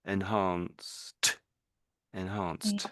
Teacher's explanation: So although it's e d for whatever reason it gets pronounced like a t in this case